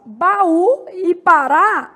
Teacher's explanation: as duas apresentam como sílaba tônica a última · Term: oxítonas